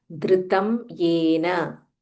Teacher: Dha Mahaprana, it's not Dhru, it's Dhr.